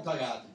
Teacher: You don't really hear Mthakathi. People kind of say, hey, yeah, well, mthakathi, so you don't really hear the M.